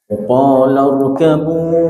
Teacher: ra-nya tafkhim didahului dengan fathah